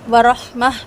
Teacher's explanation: جب وقف کریں گے تو تا کی آواز کو ہاں میں بدل کے کریں گے